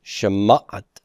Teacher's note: And my accent is going to be on that mem